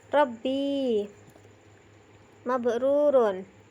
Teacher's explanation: ujung lidah agak ke dalam sedikit adalah tempat keluarnya huruf ro. Huruf ro lebih ke dalam daripada huruf nun, sedangkan ro dan nun ini lebih keluar daripada lam.